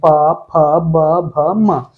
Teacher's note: प वर्ग जो होता है आपका ओष्ठ के माध्यम से बोला जाता है। जब आप प, फ, ब का उच्चारण करते हैं तो आपके जो दोनों होठ हैं वो बाहर की तरफ आते हैं और दोनों एक दूसरे को स्पर्श करते हैं।